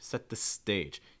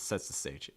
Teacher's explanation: Make sure for stage you're raising that pitch. It's not sets the stage, it's set the stage. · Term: Stress stage